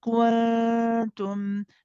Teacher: We don't touch the makhraj of the noon. Instead, we get ready and close to the articulation point of the ta. So we say kuntum, not kun.